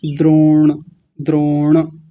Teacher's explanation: एक शब्द है द्रोण, तो द्रो बोलने के बाद में जब ण का उच्चारण करेंगे, णकार का उच्चारण करेंगे, तो जीवा कहाँ जाके लगेगी? ऊपर, मूर्धा में